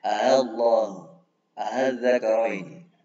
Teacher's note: Pada lafaz tersebut boleh juga dibaca tashil pada hamzah yang kedua, yaitu dengan bacanya antara hamzah dan alif.